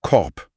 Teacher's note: Das K blockiert die Luft tief im Rachen. Korb. Ein harter Schlag.